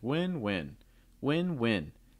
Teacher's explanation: The first win, you can tell, has a rising intonation. It's like win-win, win-win.